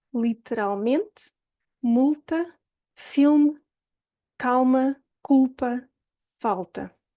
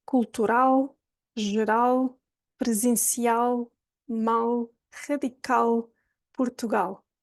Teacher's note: So what happens is the back of your tongue goes up. It touches the top of the mouth and does not release. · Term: dark L